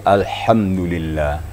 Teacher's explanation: kita perhatikan hembusan anginnya dulu baru diikuti dengan suara jadi terasa anginnya terasa di tengah-tengah tenggorokan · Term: huruf H